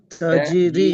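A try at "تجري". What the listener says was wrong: அல்ல தஜி. அது சேர்க்கணும். தஜி தனி ஓதையில சுக்கூன் தனி ஓதையில அது.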